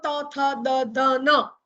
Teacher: જીભનો આગળનો ભાગ દાંતના ઉપલા ભાગને સ્પર્શે અને જે ધ્વનિ પેદા થાય તેને દંત્ય વ્યંજન તરીકે ઓળખવામાં આવે છે. તમે બોલી જુઓ ત, તમે દાંતને અડાડ્યા વગર બોલી જ નહીં શકો ત, થ, દ, ધ, ન.